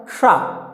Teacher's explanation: जब इसको बोलेंगे तो जिह्वा जाके आपके तालु को स्पर्श करती है, तो इसलिए इसको बोलते हैं तालव्य श।